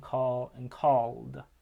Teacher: the L in call is voiced. So the D stays voiced in called. And matches the voicing of the L. So whatever it is, you have that voiced alveolar stop being added to indicate past tense.